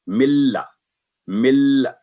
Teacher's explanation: अब ये है इदगाम बगैर गुन्ना, यानी जब मिला के हम पढ़ेंगे किसी लफ्ज को तो उसमें गुन्ना की आवाज पैदा नहीं होगी · नून साकिन है और आगे लाम है, तो नून साकिन टोटली साइलेंट होगा